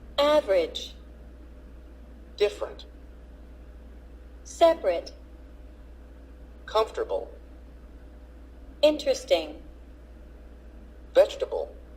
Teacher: the vowel immediately after a stressed syllable is sometimes not pronounced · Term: unpronounced vowels